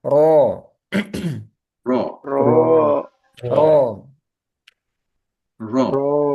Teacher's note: ro tebal juga karena fathah